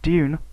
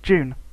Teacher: estuary english speakers use yod coalescence